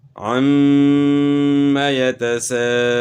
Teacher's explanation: یہاں اس کے اوپر مد کا نشان تو نہیں ڈالا، لیکن یہاں جو ہے بڑا مد ہوگا۔ الف مدہ کے بعد حمزہ ہے تو یہ مد واجب ہے، اس کی مقدار جو ہے 3 سے 4 الف جو ہے نا آپ نے کرنی ہے۔